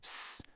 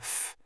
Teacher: It's not musical at all. It's the sound of turbulence, just air being forced through a really narrow passage. Think of that sharp hiss in the sound s, or that breathy puff in the sound f. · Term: friction noise